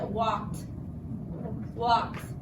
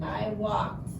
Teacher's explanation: We don't hear the E at all, and the D sounds like a T. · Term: T sound at the end